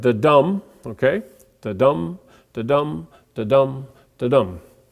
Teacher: we have two syllables and the emphasis is on the second syllable · we have 2 syllables, and the emphasis is on the second syllable. So it's the unaccented followed by the accented, and it would sound like da-dum, okay?